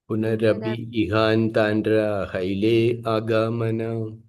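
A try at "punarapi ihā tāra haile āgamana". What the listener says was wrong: That na is silent. We don't say that tandra. It is tar. Tar. Punarapi ihatara haile agamana. In Sanskrit, you have seen the Chandra, half Chandra, and dot on that.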